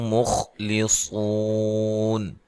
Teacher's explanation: خا کو موٹا ادا کرنا ہے، لی سو، صاد کو موٹا ادا کرنا ہے